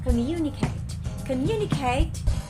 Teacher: communicate is on the second syllable so we have four syllables come the vowel sign is o